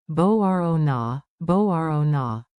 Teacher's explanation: Emphasize the rising row.